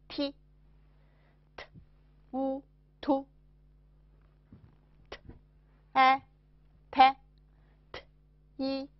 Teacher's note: 从发音部位讲，这是舌端齿龈音 。从发音方法讲，这是清塞音。发音的时候，舌端紧贴上齿龈，形成阻碍，然后舌端突然下降，使气流冲出口腔。这个音近似国际音标的▁t▁和汉语拼音的▁t，它的辅音是。一▁t▁u▁tu▁a▁te▁i▁t▁u▁tu▁te▁ti▁tu▁te▁ti▁tu▁长音▁a▁ta▁i▁ti。乌突啊他一踢乌突他踢突他踢突软音，t，呸，t，ao，套，t，哎。pay▁t▁ao▁tao▁pay▁tao▁pay▁tao▁鼻音▁t▁an▁tan▁t▁in▁tin▁t▁wun▁tun▁t▁an▁tan▁t▁in▁tin▁t▁wun▁tun▁tan▁tin▁tun▁tan▁tin▁tun。下面我们来看看它的12个音素，辅音也就是元音▁t▁三个短音▁te▁ti▁tu▁te▁ti▁tu▁长音▁ta▁ti▁tu▁ta▁ti▁tu▁软音▁tai▁tao▁tai▁tao▁鼻音▁tan▁tin▁tun▁tan▁tin▁tun▁注意。字母▁attab▁的合口鼻音符有两种情形，